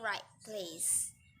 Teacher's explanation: the first alveolar placebo labial it has become billabile and point a t becomes p before bilabials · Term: assimilation